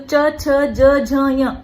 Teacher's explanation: च छ ज झ य, ये जो 5 वर्ण हैं ये तालु से उच्चारित हो रहे हैं। आपके कठोर तालु से च छ ज झ य, तालु से उच्चारित होने वाले ये वर्ण हैं। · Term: तालव्य